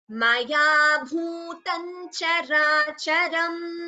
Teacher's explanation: Bhutam Characharam, we combine it and chant it as Bhutan Characharam